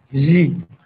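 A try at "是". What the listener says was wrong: Oh, jangan Z ya. Shi.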